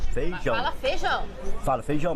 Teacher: em muitas regiões a vogal e quando está com outra desaparece